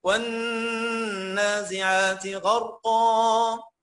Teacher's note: عشان الغين مفتوحه ودايما الغين المفتوحه مفخمه والراء مفتوحه ساكنه بعد فتح قلت غر وهتقول لي غر غر اوعى او لو قلت غر هتبوظ لي القاف مباشره تقول لي غرقا غرقا قا هتبقى غلط.